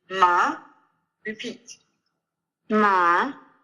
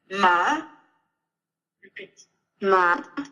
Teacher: what we have here is kind of a rising question tone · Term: second tone